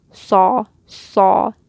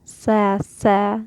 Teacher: raise that tongue towards your throat and make it heavy. So this with a fatha will sound like saw, saw.